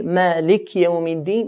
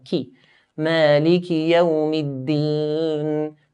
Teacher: You should hear the kaf with a kasra.